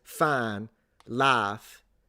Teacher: It's like an extended vowel rather than a diphthong.